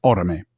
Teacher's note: Orome has 3 syllables, but the second to last is a light syllable. It's just a short vowel. And there's only one consonant after it, so it's the stress is on the third last.